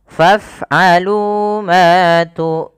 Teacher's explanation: dibaca dengan ra tafkhim tebal, kemudian dipanjangkan dengan boleh 2 harokat, boleh 4 harokat, dan boleh pula 6 harokat karena dia ada bacaan mad arid disukun.